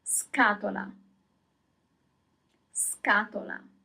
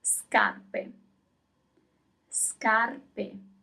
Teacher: So as soon as you have S-C-A, the sound is always ska. So the C has a hard sound. It's k, it's not ch